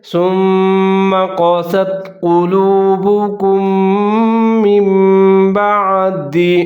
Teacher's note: نون ساکن یا تنوین کی آواز کو ہم میم کی آواز کے ساتھ تبدیل کر دیں گے